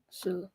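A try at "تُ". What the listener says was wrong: tu. It's a ta.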